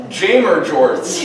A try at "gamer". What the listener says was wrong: You pronounce gamer with a soft G?